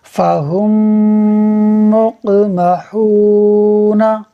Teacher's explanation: ف زبر ف، ہ میم میم پیش ہم، فہم میم قاف پیش مق، فہم مق، قاف حروف قلقلہ میں سے ہے، خوب قلقلہ ہوگا، آواز لوٹ کر نکلے گی